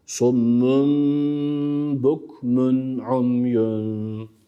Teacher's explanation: tenvinden sonra İzhar harflerinden Ayn gelmiş Dolayısıyla burada İzhar yapıyoruz